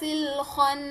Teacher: خناس, یہاں پہ ایک اور چیز میں آپ نے دھیان رکھنا ہے کہ جو خو ہے یہ خو کو بالکل کھرکھرا پڑھنا ہے, حلق کے اوپری حصے سے پڑھنا ہے. نون میں ایز اٹ از غنہ ہو رہا ہے, غنہ کو 2 کاؤنٹس تک اسٹریچ کر کے پڑھنا ہے.